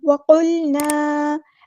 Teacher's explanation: وقل، ایسے لام کو ہلانا نہیں ہے۔ وقلنا، الف مد آ گیا تو الف سے برابر لمبا کریں گے، مد اصلی کریں گے